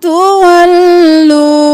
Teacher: تولو وہ مدہ ہے تو ایک الف کے برابر کھینچیں گے، تولو نہیں کریں گے۔